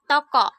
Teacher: bunyi Oh dengan ciri-ciri tengah belakang bulat